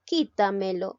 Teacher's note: La palabra quítamelo lleva la mayor fuerza de voz en la sílaba qui, es decir, en la trasantepenúltima sílaba. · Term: sobreesdrújulas